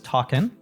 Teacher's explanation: we will drop the G. So talking, for example, becomes talkin'.